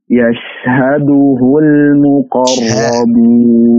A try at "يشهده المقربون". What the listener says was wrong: Ra-nya dihaluskan lagi. Yashhaduhul muqarrabun.